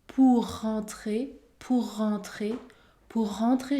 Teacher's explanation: on va prononcer un seul r plus fort